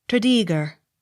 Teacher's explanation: Accent on second syllable.